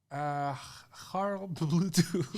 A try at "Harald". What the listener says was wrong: Harald. Oh, with an A.